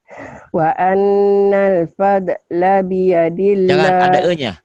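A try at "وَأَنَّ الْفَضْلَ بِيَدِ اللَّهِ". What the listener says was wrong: Jangan ada e-nya. Wa annal fadla, jangan pada, jangan ada e-nya. Wa annal fadla, bukan kol-kolah ini.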